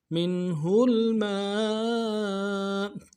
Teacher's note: نون ساکن میں یہاں پہ اظہار ہوگا